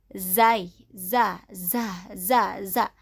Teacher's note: Zai, sifatnya jahar, maka suara sofirnya seperti lebah. Zai, za, za, za, za.